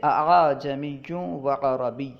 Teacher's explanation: حمزہ کو نہ تو خوب ظاہر کر کے پڑھنا اور نہ ہی حمزہ کو کسی دوسرے حرف سے بدل دینا، بلکہ دونوں کے درمیان پڑھنا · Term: تسہیل